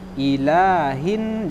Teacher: Satu, ila ini panjangnya 2 harokat. Ilahin, jangan ilahin.